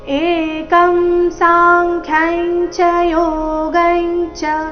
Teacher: ಸಾಂಖ್ಯ ಆದ ನಂತರ ಇರೋ ಅನುಸ್ವಾರದ ಉಚ್ಚಾರಣೆ ಚ ವರ್ಗದ ಅನುನಾಸಿಕ ಯ ರೀತಿ ಅದೇ ತರಹ ಯೋಗೈಂಚ ಅಲ್ಲಿಯೂ ಸಹ ಅನುಸ್ವಾರದ ಉಚ್ಚಾರಣೆ ಅನುನಾಸಿಕ ಯಾಗಿದೆ